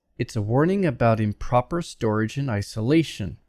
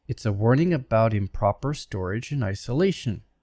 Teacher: notice the schwa syllables the underlying ones are very short